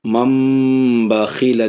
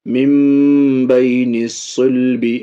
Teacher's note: نون کو میم سے بدل رہے ہیں با آ جانے کی وجہ سے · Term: اقلاب